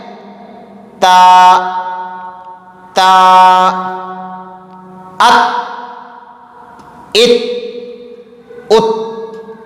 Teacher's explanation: تا ات ات ات، حمزہ شروع میں لگا دیں، جہاں آواز رکتی ہے سمجھے وہی اس حرف کا مخرج ہے۔ تو تا کا مخرج ہوا زبان کی نوک ثنایا علیہ کی جڑ